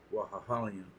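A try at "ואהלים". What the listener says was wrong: Putting too many hu's in there. Wa, a hall, yum.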